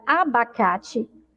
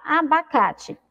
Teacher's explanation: Quando a gente pronuncia abacate, a gente percebe que tem um som ali de I no final